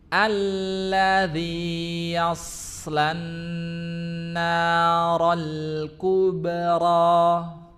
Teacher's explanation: cuma huruf shad yang mati yas itu tanpa memonyongkan kedua bibirnya. Jadi bukan yausla, bukan yaus ya.